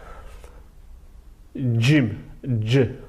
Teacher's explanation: dil damağa dəyir, amma dişə dəymir. Və buna görə də bu, deməli qəməri hərf gedir.